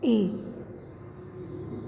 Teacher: यह हिंदी का अर्ध संवृत दीर्घ अग्र स्वर है।